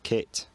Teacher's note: Posh middle class 2020s English the vowel in kit lowers so that it becomes kit